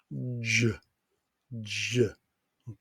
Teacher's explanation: you could hear your throat vibrate as the voice box vibrates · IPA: /ʒ/